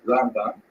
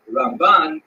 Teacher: Rambam is pronounced with the emphasis on the first syllable, Rambam, and Ramban is pronounced with the emphasis on the second syllable, Rambam and Ramban.